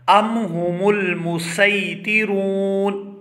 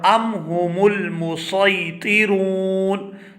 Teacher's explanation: سین کے ساتھ بھی پڑھا جا سکتا ہے اور صاد کے ساتھ بھی پڑھا جا سکتا ہے